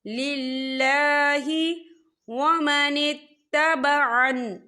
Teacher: अल्लाह का नाम बारीक पढ़ा जाएगा, अल्लाह के नाम से पहले ज़ेर है